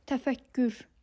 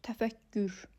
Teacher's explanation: Deməli, k-nin ikincisi g oldu.